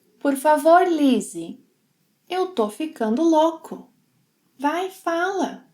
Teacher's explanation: he shortens estou to tô, and instead of louco, he says loco